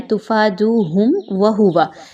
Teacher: آپ نے میم کی آواز کو یہاں پر ود آؤٹ غنہ پڑھنا ہے، غنے کے بغیر پڑھنا ہے، غنہ نہیں کرنا، کلیئر پڑھنا ہے میم کی آواز کو۔